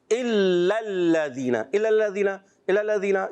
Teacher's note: اچھا الا الذین، حمزہ کو خوب واضح کریں گے، لام پہلے والا بھی مشدد، دوسرا بھی لام مشدد، ذرا رک کر ادا کریں